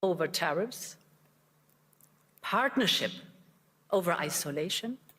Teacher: she's making that secondary stress so big, it's hard to really tell that it's secondary. Sounds primary.